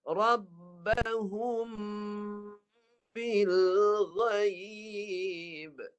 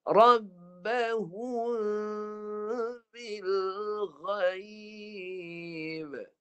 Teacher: Kan tak jelas mim tu. Dia bunyi mim tapi tak dijelaskan. Bibir tak rapat. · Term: Ikhfa syafawi